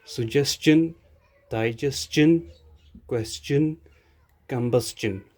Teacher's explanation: When tion is preceded by s, when tion follows s in a word, its sound is not shun, it is chin. These words have s before tion, that's why their sound is chin, not shun.